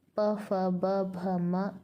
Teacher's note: जिन व्यंजनों का उच्चारण ओष्ठों की सहायता से होता है वे ओष्ठ्य या द्वओष्ठ्यम कहलाते हैं।